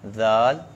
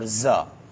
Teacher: ذال نرم حروف میں سے ہے, زا سیٹی والے حروف میں سے ہے